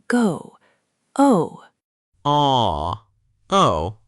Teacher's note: O gliding to U, like O in go.